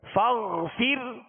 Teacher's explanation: را کو باریک پڑھیں گے. را ساکن سے پہلے زیر اسی کلمے میں ہے